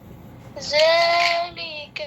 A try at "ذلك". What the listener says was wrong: ذال पर सीटी ना आए.